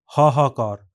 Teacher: ह के बाद ह आए तो ये टोनलेस नहीं होता है हाहाकार अपनी ये पूरी आवाज देता है।